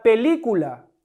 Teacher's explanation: ¿Cuál es la sílaba tónica? Li, la antepenúltima.